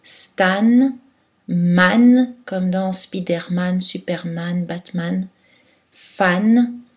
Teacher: aux mots d'origine anglaise qui ont leurs torts graff à n là on prononce une voyelle oral avec le n